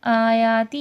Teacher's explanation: آیا کھینچ کے پڑھا جائے گا، اور ہی بھی کیونکہ کھڑا زبر ہے اور کھڑی زیر ہے، کھڑا زبر کھڑی زیر الٹا پیش کھینچ کے پڑھا جاتا ہے.